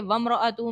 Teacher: میم ساکن کے بعد رو ہے، اظہار شفوی کا قاعدہ ہوگا، غنہ نہیں کریں گے